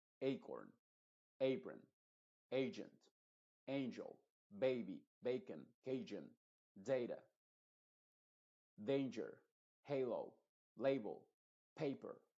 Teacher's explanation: la sílaba que lleva la fuerza de la voz en este caso está en la primera sílaba de todas estas palabras estas palabras tienen dos silabas en sí Entonces si es que